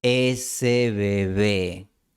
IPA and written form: 'e.se βe'βe (ese bebé)